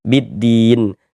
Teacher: huruf lamnya ini nggak ada tanda bacanya nih. Makanya dari bi langsung masuk ke huruf dal, ke huruf syamsiah ini. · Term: idgham syamsiah